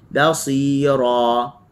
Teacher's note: Basi, ba buka, si kena sengih, ra kena baca dengan tebal.